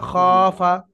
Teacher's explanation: জাদা, খফা, খ আলিফ জাবার খ, খ আলিফ জাবার খ, দেখেন আলিফের ডান দিকে খর উপর হুম। জাবার, আলিফ মাদ্দা, সেহেতু খ টান হলো। আর ফায়ের উপরে হারাকাত থাকার কারণে হারাকাত টান হয় না, যেটি সবকে পড়েছেন আপনি, তো সেহেতু ফা টান হবে না।